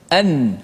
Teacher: Nun tu dibaca dengan izhar, dimatikan dengan betul dengan menekan pada makhrajnya